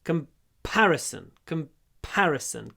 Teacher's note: И мы не говорим comparison, вот ударение на втором слоге